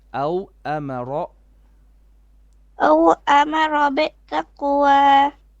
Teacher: make your ra more heavy